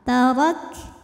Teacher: Nisfu ma tabi'i zahiri, karena ada alif didahului fathah, maka mim panjang dua harokat. Ma tarak, huruf ra dibunyikan secara tafkhim karena berbaris di atas, maka dibaca tebal. Tarak, kafnya selain syiddah kuat ya, rok, nah itu kuat suaranya.